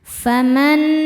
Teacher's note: Nunnya dihukumi gunnah musyaddadah karena nun bertasydid. Cara bacanya berdengung, dengungannya tahan kurang lebih 2 harokat.